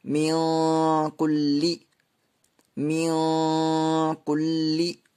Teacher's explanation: حرفوں میں سے کاف آ رہا ہے، اس لیے یہاں پر نون ساکن کی آواز کو ناک میں چھپا کر پڑھیں گے